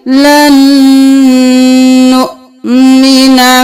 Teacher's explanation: لام زبر نون لن, اب پھر نون کو پیش کے ساتھ نون پیش حمزہ نو لن نو, یہاں پر واو نہیں پڑھیں گے, حمزہ کے اوپر جزم ہے جھٹکا دیں گے